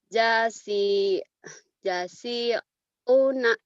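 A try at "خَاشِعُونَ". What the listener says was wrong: Mana jasi una. Kho. Titiknya di atas. Khosyi'una.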